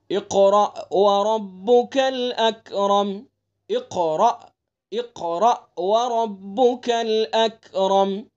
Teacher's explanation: اکرم، دیکھیں اقرأ یہاں بڑا قاف ہے، تو اس کو اچھی طرح سے اپنے مخرج سے اور پر کر کے پڑھیں گے، اور را کو بھی پر پڑھیں گے، اور حمزہ کو تھوڑا جھٹکے کے ساتھ پڑھیں گے. وَرَبُّكَ، را کو پر پڑھیں گے چونکہ آپ نے قاعدہ پڑھ لیا را کے اوپر زبر ہے.